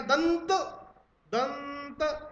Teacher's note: अनुस्वार बोलते समय नाक से वायु निकलेगी